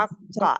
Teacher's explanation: हमजा लंबा नहीं, जबर आखिर में खींचना नहीं है इनको, क्योंकि जे आगे अगर कुछ नहीं है।